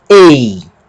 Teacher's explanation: O EI tem uma aspiração branda, que também não altera o som desse ditongo. Então, o ditongo continua EI.